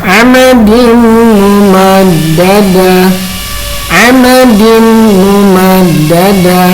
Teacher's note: Kita contohnya ini idgham biguna, amadin mumaddada, amadin mumaddada. Nah, tanwin menghadap mim harus diidghamkan, jadi memasukkan dari tanwin ke mim. Amadin langsung mim ya.